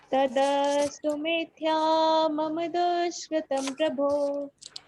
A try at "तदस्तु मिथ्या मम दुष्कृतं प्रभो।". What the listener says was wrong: बिल्कुल सही उच्चारण है, ठीक है।